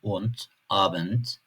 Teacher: D harfi Türkçedeki gibi fakat kelime sonlarında T gibi telaffuz edilebiliyor.